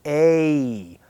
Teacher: It's called a diphthong. Diphthong is when we change the position during the sound. So it goes from that same first sound, and it glides over to the e sound.